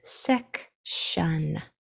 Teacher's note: that o will change to the schwa sound and say uh